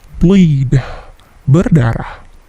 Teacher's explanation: Seperti biasa, bunyi bleed, deh-nya itu memantul sedikit. Biasanya bunyi ini jika dalam kalimat tidak terdengar.